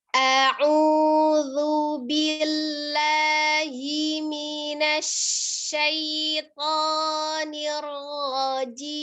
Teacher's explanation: huruf zal ujung lidahnya dikeluarkan ya, menyentuh ujung gigi seri atas.